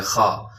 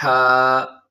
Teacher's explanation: بعض لوگ اس کو خا کر دیتے ہیں، خا، تو یہ خا نہیں ہے بلکہ اس کا ایک الگ ساؤنڈ ہے، ہا، باریک پڑھا جاتا ہے